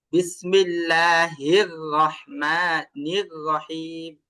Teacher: হির বলতে গেলে আপনার মুখটা গোল হবে না, এটা স্বাভাবিকই থাকবে।